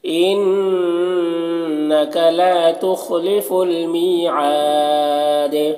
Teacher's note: دال کا زبر وہ سکون سے بدل جائے گا، سکون سے بدل جائے گا، تو یہاں پر دال میں قلقلہ پھر ہوگا۔ اور یہ سکون کو سکون عارضی کہتے ہیں، وقفی کہتے ہیں، اور اس سکون وقفی سے پہلے دیکھیں الف مدہ ہے، تو الف مدہ ہے، اس کے بعد سکون وقفی آ رہا ہے، تو یہاں پر مد عارض وقفی ہوگا، ٹھیک ہے۔